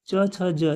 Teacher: च का उच्चारण जो है वो तालु से होता है।